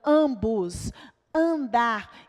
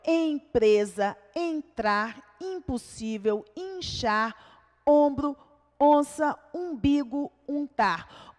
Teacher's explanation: Em ambos, não existe o som do M, não existe o som do N, né? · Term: vogal nasal